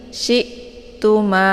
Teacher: Syi'tum ini hamzah sukun. Cara bacanya syi-nya ditekan sedikit saja ya, dan bacaannya adalah tipis